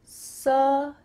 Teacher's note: Let's break down that big word here. Sustain-able. That final part sounds like uh.